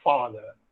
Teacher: The vocal cords are held wide apart. They do not vibrate when the air escapes through the opening between them. Thus, the sound is voiceless.